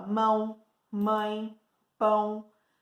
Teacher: Então, e outra coisa que a gente vai perceber, quando a pessoa tá gripada, com o nariz entupido, o som das coisas que ela fala ficam diferentes. Então, ditongos nasais são esses em que o ar ele também sai pelo nariz.